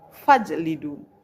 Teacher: Kenapa dikatakan qalqalah sughra? Karena huruf jim berharokat sukun yang terdapat di tengah-tengah kalimat, maka dibaca tipis atau pantulannya tipis